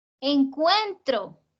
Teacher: qué encuentro tiene tres sílabas y que la fuerza está en la penúltima